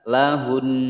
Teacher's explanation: menahan sampai dua ketukan atau dua harokat dengan tidak membaca harokat patahnya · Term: Nun bertasydid